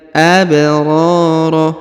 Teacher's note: Huruf ba dipantulkan karena berharokat sukun ya. Huruf ba berharokat sukun adalah salah satu dari huruf-huruf pantul ya.